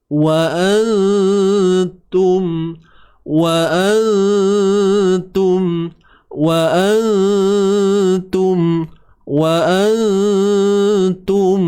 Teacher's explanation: Kemudian kat sini nun mati bertemu ta. Wa antum, nun mati bertemu ta, ikhfa haqiqi. Nipis, sebab huruf ta nipis.